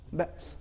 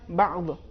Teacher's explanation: ایسا نہیں ہے کہ ہم اس کو باس کہیں گے کہ بالکل، یا بعض، اس میں عین ہے لہذا اس میں آواز رک نہیں رہی ہے، چونکہ عین حروف شدت میں سے نہیں ہے، لہذا یہ فرق ان دونوں حروف میں ہے.